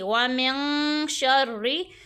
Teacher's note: یہاں پہ زبر ہے، نون ساکن کے بعد ہمارے پاس شین آ رہا ہے تو یہاں پہ ہمارے پاس گنہ ہوگا اخفا کا، ٹھیک ہے۔ یہاں پہ ہماری آواز ناک میں جائے گی، اور را کو جو ہے ہم باریک پڑھیں گے۔